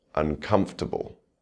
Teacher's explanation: The stress remains on that second syllable.